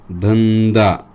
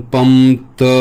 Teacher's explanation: तिथे न चाच आवाज येतो कारण या अक्षरावरती त्या अनुस्वाराचा आवाज अवलंबून असतो